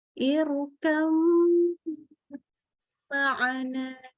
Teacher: Ya, dan itu ada gunnahnya, yaitu katanya adalah yang harusnya irkab ya ba sukun dia langsung melebur kepada huruf mim karena mereka kan ba sama mim itu makhrajnya sama persis. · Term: idgham mutajanisain